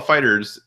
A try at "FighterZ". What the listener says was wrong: you don't pronounce it. The Z is like an S.